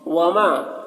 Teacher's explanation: وما یہاں پر الف مدہ ہے، ایک الف کے برابر کھینچ کر پڑھیں گے